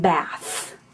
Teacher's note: would be the voiceless inter dental fricative as in bath